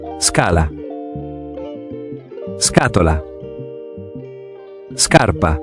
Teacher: Kapag ang SC ay sinundan naman ng A o U, ang basa natin ay hard sound na SK na gaya sa English word ng sky or skip. Kaya kapag SCA, ang basa natin ay skaca.